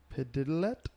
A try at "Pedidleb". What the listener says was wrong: No, ebb. E-B-B at the end. Not T. There's no T.